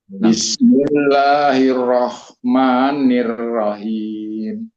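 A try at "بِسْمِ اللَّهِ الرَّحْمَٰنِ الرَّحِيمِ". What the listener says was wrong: Bukan rahim, roh. Belum, rohnya bagus, rohinya kurang.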